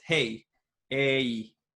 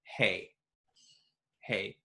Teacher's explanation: we break diphthongs, which are combinations of two vowels, into sort of two equal length vowels. Hey, a, whereas an American would pronounce it hey, hey, on one syllable, one motion, and we sort of break it in the middle.